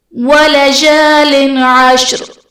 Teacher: وَلَجَالٍ عَشْرٍ، وَلَجَالٍ عَشْرٍ میں لام کے نیچے دو زیر کی تنوین، تنوین کے بعد حروف حلقی میں سے عین ہے تو یہاں پر اظہار کا قاعدہ ہوگا، یعنی تنوین میں ہم غنہ نہیں کریں گے